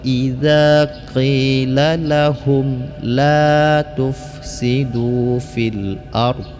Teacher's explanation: mim mati ini mim mati bertemu dengan lam. Hukum bacaannya ilhar syafawi, jangan sampai didengungkan ya.